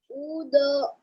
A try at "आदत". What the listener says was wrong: बेटा ऊ क्यों पढ़ रहे हो आप बेटा, उसको बार बार, आ है वो, आदत, आदत।